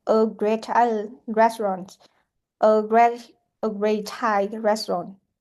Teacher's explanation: we will pronounce the consonants as a long consonant sound.